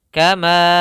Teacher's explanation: Panjang hukum mad ini adalah 4 harokat. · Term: mad jaiz munfasil